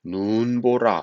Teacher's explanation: 예를 들어 본다면 눈이라는 단어는 하늘에서 내리는 눈, 긴 소리를 가진 단어인데 그래서 이 눈이라는 단어가 첫 음절에 올 때는 눈보라 이렇게 길게 발음이 됩니다. 긴 소리로 발음이 납니다.